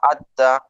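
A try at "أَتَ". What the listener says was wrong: জবর আদ, এটা জবর না, জের না। আত্তি, এটা জবর।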